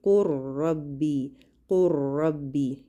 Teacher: ہم لام کو نہیں پڑھیں گے بلکہ ہم را کو شد کے ساتھ 2 دفعہ پڑھیں گے، یعنی را کو ہم مشدد کر کے پڑھیں گے۔ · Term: ادغام